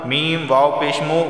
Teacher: واو ساکن سے پہلے پیش آیا ہے تو اسے بھی ایک الف کے برابر کھینچ کر پڑھنا ہوگا